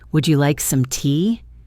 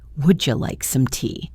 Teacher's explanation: a D sound followed by a Y sound often creates a J sound.